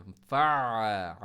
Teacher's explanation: आइन में स्टॉप नहीं होना चाहिए